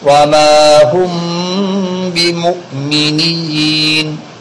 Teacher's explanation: اخفاء شفوی، اس لیے کہ میم ساکن کے بعد با اخفاء شفوی کا حرف آیا ہوا ہے